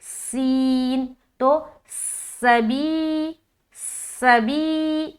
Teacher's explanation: اس حرف کو ادا کرتے ہوئے آواز میں ایک سیٹی نما سنائی دے گی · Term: صفت صفیر